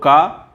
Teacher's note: कंठ ध्वनि भी है लेकिन अघोष भी है और महाप्राण नहीं है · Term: अल्प प्राण